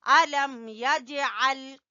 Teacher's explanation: جیم کے اوپر ہلکا کلکلا کریں گے